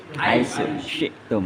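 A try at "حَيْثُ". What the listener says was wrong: Haitu. Tu itu sa. Bukan haisu. Kalau haisu kena sin. Ta. Kalau di Makroid itu di biji sama sini, biji seri atas. Ta. Lidah yang depan, ini lidah saya. Ini lidah nih. Ini mentok sama diri. Haitu. Jadi bukan haisu. Haisu itu sin.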